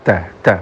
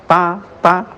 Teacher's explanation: ta dan kaf ketika hidup maka sifat menahan suaranya lebih menonjol, lebih dominan daripada aliran angin. Oleh karena itu maka angin tidak begitu banyak ya.